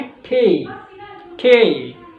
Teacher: ट को ठ की तरह, ये प्योर इंग्लिश में होता है